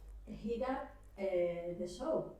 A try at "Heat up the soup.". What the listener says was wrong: The soup. porque si no es jabón. Suena como jabón, has dicho soap. Es un error común, ¿eh?